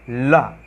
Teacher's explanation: जो हवा निकलेगी वो जीभ के जो दोनों तरफ से गैप है ना वहाँ से निकल जाएगी, ला। ठीक है, एकदम से जीभ नीचे गिरेगी और हवा जो है दोनों तरफ से निकल जाएगी। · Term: पार्श्व वर्ण, पार्श्व